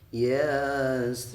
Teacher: Yasin, ya-nya 2 harokat, sinnya 6 harokat.